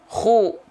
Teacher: juga punya sifat hams mengalirnya hembusan angin atau nafas dari mulut tapi karakteristiknya adalah berupa dengkuran Kenapa dengkuran karena keluarnya dari tenggorokan paling atas